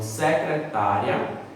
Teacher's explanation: secretária é uma palavra paroxítona, porque a penúltima sílaba é a mais forte.